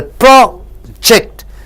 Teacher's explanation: See, when you project PROJECT, O and E are two vowels, so you get two syllables. When you stress the first syllable, project, it means research.